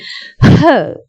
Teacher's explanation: it's a glottal stop. The breath has come to a stop for a while.